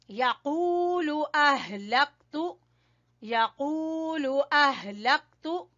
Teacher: ہا کو اپنے اقصا حلق آخر والے حصے سے نکالنا ہے